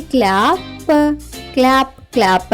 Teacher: సిఎల్ యొక్క శబ్దం కాలా కాకుండా క్ల అవుతుంది